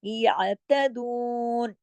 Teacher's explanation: دو حرکت کھینچنا اس کا حق ہے کیونکہ اس کے ساتھ واؤ مدہ لگا ہوا ہے